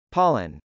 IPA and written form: pˈɑlən (pollen)